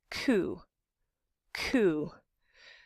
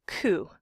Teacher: It's where it gets soft, the soft palate it's sometimes called. And it's a stop, also called a plosive, because in order to make the k sound, you have to build up a little air pressure and then pop it, let it release